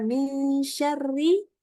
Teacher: seluruh yang berharakat kasrah RI itu pasti dibaca tipis ya